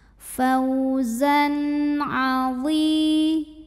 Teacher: Berikutnya ada hukum izhar halqi. Karena ada tanwin fathah yang menghadapi huruf halqi atau huruf tenggorokan yaitu ain, maka tanwinnya kita bunyikan dengan N yang jelas ya.